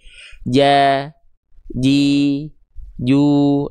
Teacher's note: Nah, seperti itu huruf jim dilafalkan. Jadi, tengah lidahnya nempel rapat ke langit-langit di atasnya.